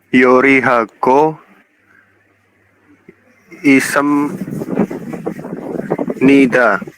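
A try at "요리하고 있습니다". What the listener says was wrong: Yori hago ismnida. Bukan isep nida seperti itu ya.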